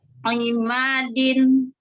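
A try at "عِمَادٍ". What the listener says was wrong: Oh, ma-nya masih terbaca panjang. Jangan dipanjangin.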